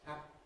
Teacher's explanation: What you hear in the middle of happy is a moment's silence. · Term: voiceless plosives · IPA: [ˈhæpi]